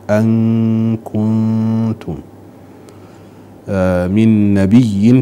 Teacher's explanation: توالي إخفاءين، النون عند الكاف والنون عند التاء، أن كنتم من نبي، تشديد الياء ننتبه له أيضا، مرت مرتين.